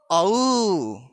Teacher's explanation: ओ और औ वर्ण का उच्चारण स्थान कंठ और ओष्ठ होता है। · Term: कंठोष्टम